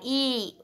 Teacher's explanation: ई मुख विवर कह रहे संवृत है। और जीभ की स्थिति अग्र होती है और ओठ की स्थिति अवृतमुखी होती है। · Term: बड़ी ई